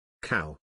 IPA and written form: kaʊ (Cow)